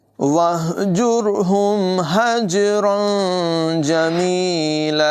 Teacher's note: जीम हुरूफ क़लक़ला में से है। इसको ज़ोर लगाकर क़लक़ला करके पढ़ेंगे। हजरन, तनवीन के बाद जीम हुरूफ इख़्फ़ा में से है।